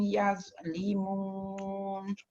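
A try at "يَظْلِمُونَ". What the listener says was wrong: Dha dia mesti keluar hujung lidah. Kalau tak dia tak jadi dha. Limun. Dia mesti kena keluarkan hujung lidah tu baru dapat sebut dha dengan tepat.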